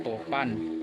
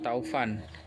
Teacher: vokal o menjadi au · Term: diftongisasi